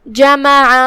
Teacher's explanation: آخر میں حرف العین ہے، عین کی ادائیگی حلق کے درمیان والے حصے سے ہے، لہذا اس کا دھیان رہے.